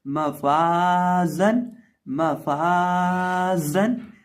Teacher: आखिर पे हमारे पास जा है, जा में सीटी पैदा करेंगे